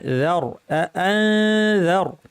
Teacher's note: রটা ভারী কিন্তু জালটা পাতলা